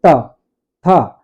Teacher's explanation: तो हमारे जीवा का अग्रभाग हमारे ऊपर वाले जो दांत के ऊपर मसूड़ा, जहां पे दांत निकला हुआ है वहीं पे मसूड़े पर स्पर्श करता है, तब इन वर्णों का उच्चारण होता है।